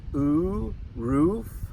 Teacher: some people pronounce it with the long double O sound